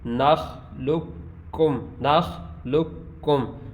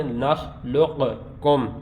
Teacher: یہ قاف جو درمیان والا ہے یہ ختم ہو گیا, ساکن ہو گیا, اور آگے والا کاف ہم یہ سائلنٹ ہو گیا درمیان والا, اور ہم آگے والے کاف کو پڑھیں گے.